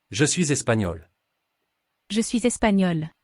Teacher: the g is silent and it sounds like there is a y after the N